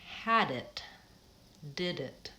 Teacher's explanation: we tend to link those two words and that D jumps on to the next word it sounds almost like had dipped it's almost like the DS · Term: final D